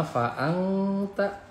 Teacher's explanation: Fa'angta ini adalah ikhfa ya, nun mati menghadapi huruf ta berarti ikhfa. Dibaca jadi samar.